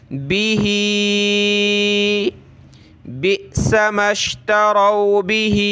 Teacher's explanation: हा पे खड़ी ज़ेर है और मद है तो नीचे की तरफ खींचेंगे